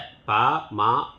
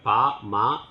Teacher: மேல் கீழ் இதழ் உற பா மா பிறக்கும். மேலுதடும் கீழுதடும் சேர்வதால் பா மா பிறக்கின்றன.